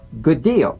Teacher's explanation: you don't need to fully pronounce the first D like good deal prepare the first execute the second good deal and cognates the